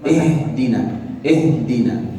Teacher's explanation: ketika kita berpindah dari kasrah kemudian ke huruf ha yang sukun, maka keluarkanlah udara atau nafas dari paru-paru ini. · فحتى أنطقها نطقا صحيحا أنتقل من الكسر إلى سكون الهاء، وعند سكون الهاء يخرج الهواء من الرئتين.